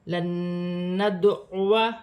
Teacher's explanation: نون ساکن کے بعد نون مشدد آ رہا ہے. ادغام مال غنہ کا قاعدہ ہے، غنہ بھی کیا جائے گا، ملا کر بھی پڑھا جائے گا